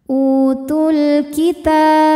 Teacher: Alif lamnya dinamakan dengan alif lam qamariyah karena alif lam menghadapi huruf qamariyah yaitu kaf. Maka lam dibaca dengan jelas atau dinamakan dengan izhar qamari.